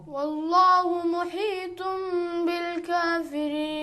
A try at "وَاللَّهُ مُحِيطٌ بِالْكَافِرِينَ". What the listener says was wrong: अब ता को ता पर जोर नहीं लगा. मुही ये सही नहीं है. वल्लाहु मुही तुमने बिल काफिरीन.